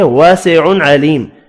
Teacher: الف مدہ اور یہ مدہ ایک ایک الف کی مقدار میں کھینچ کر پڑھے جائیں گے. تنوین کا اظہار بھی ہوگا اور میم ساکن پڑھیں گے وف کی صورت میں.